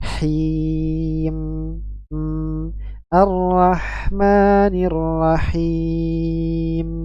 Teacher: mim ketika sukun memiliki sifat bainiyah yang jelas, ya, bainiyahnya, suaranya mengalir pertengahan. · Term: mim sukun